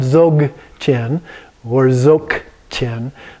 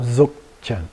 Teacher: it's pronounced halfway between a G and a K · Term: just a stop